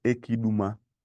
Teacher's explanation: But as time goes on, you can get better and pronounce ekiduma, leaving out some vowels at the end of the first word